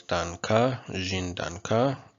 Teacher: We have this little accent which implies that the stress is on the final syllable despite the fact that it ends in a vowel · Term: acute accent